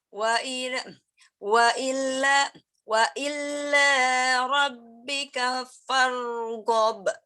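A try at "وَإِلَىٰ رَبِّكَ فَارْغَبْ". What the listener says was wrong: Oke, lamnya pakai tasdid atau enggak? Catatan ya, ila sama illa jangan kebalik ya. Karena kalau misalkan sampai kebalik, artinya 180 derajat bedanya. Itu satu kata yang enggak boleh sama sekali salah. Kita baca lam tasdid emang enggaknya. Ya, karena yang satu ila ke gitu ya, artinya lurus-lurus aja. Illa artinya kecuali. Jadi kebalikannya. Jadi hati-hati baca ila.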